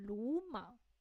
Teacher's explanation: we would change the first third tone to a second tone